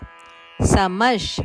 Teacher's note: ಮದ ನಂತರ ಬರುವ ವಿಸರ್ಗದ ಉಚ್ಚಾರಣೆ ಶದಂತೆ